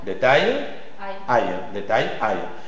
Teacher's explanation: Aussi, tu as la graphie A et L. Dans la graphie A et L, tu prononces aïe. Le A suivi de yod. Aïe. Exemple.